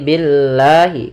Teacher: lam tipis tidak dibaca dengan lam tebal sehingga di sini bukan lagi Billah tapi Billahi kemudian lafal la · Setiap lafal Allah bila didahului dengan huruf berharakat kasrah, maka dinamakan dengan lam tarqiq, yaitu lam yang lam tipis, tidak dibaca dengan lam tebal. Sehingga di sini bukan lagi billah tapi billahi. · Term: lam tarqik